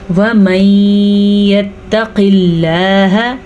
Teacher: پھر سے ادغام بالغنہ ہو رہا ہے کیونکہ نون ساکن کے بعد یمون میں سے یا آیا ہوا ہے، تو یہاں پہ ادغام بالغنہ ہوگا ساکن کی وجہ سے، نون ساکن کی وجہ سے.